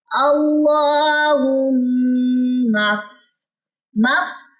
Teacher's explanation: میم مشدد کا ہم غنہ کریں گے اور غنے کی مقدار بھی 2 سیکنڈ کے قریب ہی ہوتی ہے